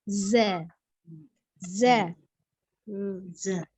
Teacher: ketika dia berharakat fathah maka dia berbunyi Za secara makhraj ya huruf Zai keluar dari ujung lidah yang bertemu dengan dua gigi seri atas dan bawah